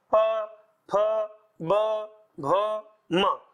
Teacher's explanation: पांचों अक्षर किसको छू रहे हैं? दोनों होठ को छू रहे हैं। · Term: ओष्ठ